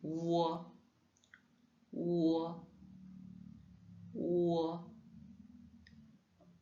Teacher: En fait, c'est un son qui est rond et long. Il n'y a pas de similitude avec un autre son francophone.